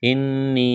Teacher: نون مشدد ہے، آواز ناک میں چھپائیں گے